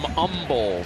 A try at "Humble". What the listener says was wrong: No H.